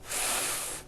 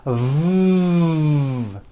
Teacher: the F sound is unvoiced and sounds like this F and the V sound is voiced and sounds like this V correctly pronouncing these sounds will make